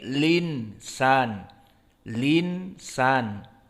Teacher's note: Dihapuskan hamzahnya dan dipindahkan harokatnya.